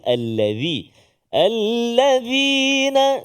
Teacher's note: Huruf dzal, hujung lidah keluar sedikit tak kala menyebut huruf dzal.